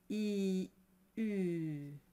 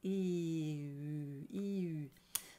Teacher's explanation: it's a bit like E, but you pucker around it. E, U. So it's like putting an O, a very tight O around an E sound.